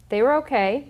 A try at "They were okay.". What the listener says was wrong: Too fast. Don't speed it up.